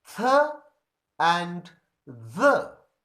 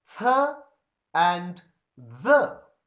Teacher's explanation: And you can feel, if you try to pronounce these sounds, the tip of our tongue touches the upper teeth in the production of these sounds. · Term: dental sounds